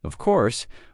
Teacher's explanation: when they are certain, their voice goes down strongly.